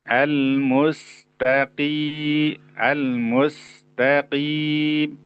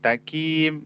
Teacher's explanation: Artinya terlalu menipiskan huruf qo sehingga mirip dengan huruf K.